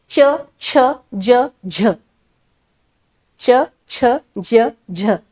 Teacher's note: आपण प पाहिलेत ओष्य क पाहिलेत कंठ्य आणि आता तालव्य बघतोय टाळूच्या मदतीने उच्चार होतो तालव्य वर्ण